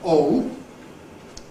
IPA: ɔʊ